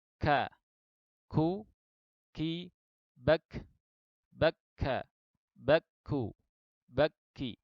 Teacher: pangkal lidah sedikit di bawah makhraj qaf, ya, tepatnya antara langit-langit lunak dan langit-langit keras, yaitu huruf kaf